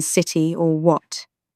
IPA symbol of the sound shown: ʔ